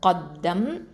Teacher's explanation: இந்த காஃப் வந்து heavy letter, அப்போது நல்லா வாயை ஓப்பன் பண்ணி சொல்லணும்